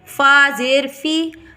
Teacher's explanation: فا زیر فی حروف شفوی ہے، مد اصلی ہے